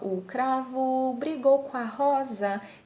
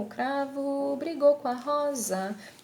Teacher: eu suprimo aqui o M, eu não pronuncio e já coloco direto o A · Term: elipse